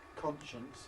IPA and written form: ˈkɒnʃəns (conscience)